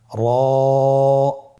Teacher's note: র হরফটি এখানে আমরা পোর করে উচ্চারণ করব, মোটা করে উচ্চারণ করব, এবং র হরফটি এক আলিফ টেনে পড়ব।